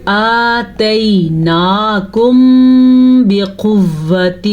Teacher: وہ قاعدہ اس طریقے سے ہوتا ہے، جب بھی قرآن مجید میں میم ساکن آ جائے اور میم ساکن کے بعد حرف با آ جائے تو دونوں ہونٹ بند ہو جاتے ہیں اور غنے کی آواز آتی ہے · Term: اخفاء شفوی